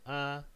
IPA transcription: aː